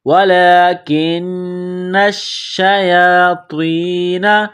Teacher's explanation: وَلَكِنَّ الشَّيَاطِينَ، نون کو شین کے ساتھ ملائیں گے، نون کے اوپر تشدید ہے، شین کے اوپر تشدید ہے، تو نون اور شین میں سختی کریں گے، دبائیں گے